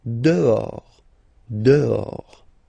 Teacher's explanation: Okay, so remember, final S not pronounced, and then this H in French doesn't exist phonetically, so you don't pronounce it